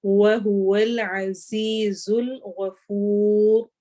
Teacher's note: آخر میں را موٹی ہوگی